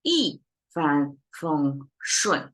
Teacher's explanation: So you have two dropping sound and two flat one in the middle